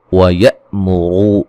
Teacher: इलल खै खा को मोटा अदा करेंगे, या लीन है, रा को बारीक पढ़ा जाएगा। व यअमुरू रा को मोटा अदा करेंगे